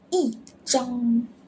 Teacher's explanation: Because other tones before, which is the first tone, we need to read fourth tone.